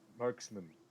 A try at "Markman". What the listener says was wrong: It was just Markman, not Marksman.